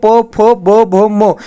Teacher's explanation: आप ओष्ठ से कहोगे तो प, फ, भ, भ, म